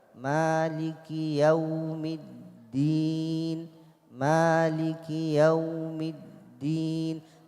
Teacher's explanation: والدال مشددة مالك يوم الدين، مالك يوم الدين. الدال لازم شديدة وهو مخرجها من طرف اللسان مع أصول الثنايا العليا.